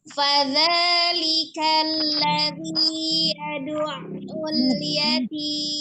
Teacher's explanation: Tasdid huruf ain ya, kemudian zanya ada mod tabii alif ya, panjang 2 harakat, kemudian zi panjang juga 2 harakat · bertemu dengan mim satu huruf yang disukunkan karena waqaf ya, maka panjangnya boleh 2, 4 atau 6 menjadi mad arid li sukun ya.